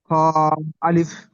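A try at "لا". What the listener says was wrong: খ নয়, লাম আলিফ।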